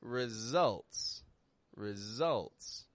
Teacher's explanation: Another word where the S is sounding like a Z.